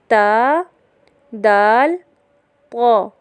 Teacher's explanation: جب ثنایا علیہ یعنی سامنے والے اوپر کے 2 دانتوں کی جڑ سے لگے تو 3 حروف ادا ہوتے ہیں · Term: حروف نطعیہ